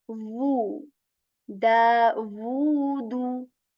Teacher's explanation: You're not supposed to mistakenly say daudu, oo. You're not supposed to make oo sound here. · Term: woo sound